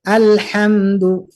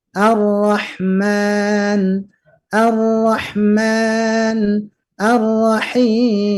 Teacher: jangan menggunakan ha besar tapi ha kecil Kalau istilah kita ya yaitu keluar dari tengah tenggorokan